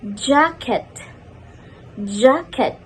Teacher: cheese cheese j You place your tongue just behind the alveolar ridge, stop the airflow, and release it with friction while vibrating your vocal cords. The manner of articulation is post-alveolar affricate.